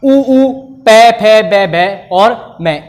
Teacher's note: इन सभी का उच्चारण स्थान ओष्ठ के द्वारा होता है